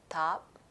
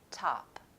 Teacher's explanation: I'll say some words using the dentalized T and then the American alveolar T.